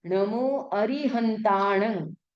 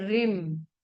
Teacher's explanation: ऊपर बिंदी को प्राकृत में बोलते हैं घ नाक से, और संस्कृत में बोलते हैं म